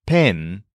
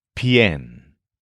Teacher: But for this verb, when that stem is stressed, we actually bend the vowel and change it from pen to pien.